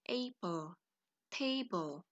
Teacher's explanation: Pada suku kata A pada apple kita tekan, suku kata T pada table kita tekan. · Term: penekanan kata